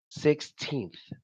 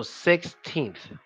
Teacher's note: when you're saying sixteenth you have to stick your tongue out at the end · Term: th sound